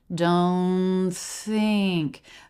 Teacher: The N is linking right into that unvoiced TH.